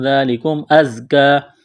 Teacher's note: زا میں سیٹی کی آواز پیدا کریں گے